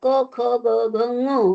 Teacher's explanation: आपण कंठातून त्याचा आवाज निघतो म्हणून त्याला कंठ्य असं म्हणतात. कंठ म्हणजे गळा, कळलं?